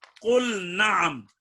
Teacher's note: لام کا نون میں ادغام نہیں ہوگا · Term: اظہار